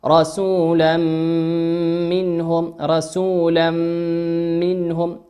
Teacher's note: هذا التنوين أتى بعده حرف الميم، والميم من حروف الإدغام بغنة